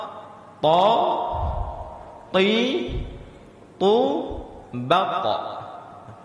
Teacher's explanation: Huruf ta ini di antara huruf yang ketika dibaca tidak mengeluarkan angin.